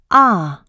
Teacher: The /ɑ/ is lax, so it is short in duration.